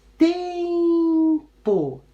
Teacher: A sílaba tônica da palavra tempo é o tem, é a sílaba mais comprida.